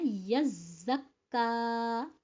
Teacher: کیونکہ زا پر بھی شد ہے کاف پر بھی شد ہے. پہلے زا کو ڈبل ٹائم پڑھیں گے اس کے بعد کاف کی باری ہوگی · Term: ڈبل تشدید